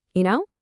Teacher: Use a light rising tone. You know, it shouldn't sound like a demand for an answer.